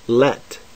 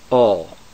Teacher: lamid sounds like the light l as in let not like the dark l as in all